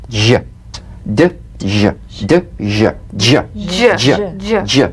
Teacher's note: It's a combination of the D drum beat and the ZH. So, place the tongue on the upper gum ridge for the D, d, then let the tip peel down for the ZH resonance